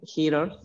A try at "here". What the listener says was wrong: No suena here. La E, no suena la E final.